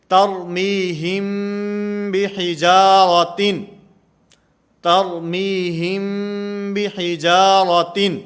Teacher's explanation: میم ساکن کے بعد اگر با آئے گی تو یہاں پر اخفا ہوگا، جیسے ترمیہم بحجارۃ، ترمیہم بحجارۃ، یہاں پر اخفا مال غنہ کا معنی غنہ بھی کریں گے، آواز کو ناک کے اندر بھی لے جائیں گے اور با کو ادا کرتے ہوئے یہ ہونٹوں سے نرمی کے ساتھ ادا کی جائے گی